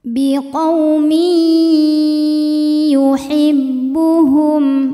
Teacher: idgham bhunah karena ada tanwin kasrah yang menghadapi huruf ya maka tanwin dileburkan ke ya disertai bunyi dengung